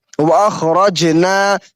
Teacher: यहाँ जीम के ऊपर जज्म है और जीम हुरूफ कलकला में से है, तो यहाँ पे थोड़ा सा कलकला करके पढ़ेंगे